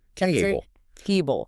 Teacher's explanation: This is called word stress. You don't say table with equal force on both halves. You punch the first part.